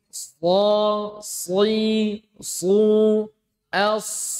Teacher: Pertama, tajam. Kedua, itbaq tebal sempurna. Isti'la dia tebal. Kemudian rakhaah dia mengalir. Kemudian hames keluar nafas. Itu huruf shad.